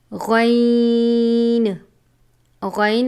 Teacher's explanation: غین غین حروف مستعلیہ میں سے ہے، جسے ہمیشہ پر یعنی موٹا پڑھا جاتا ہے. حلق کے اوپر والے حصے سے ادا ہوتا ہے